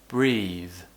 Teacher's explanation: it's a bit uncommon to have the voice th sound at the end of words but it does happen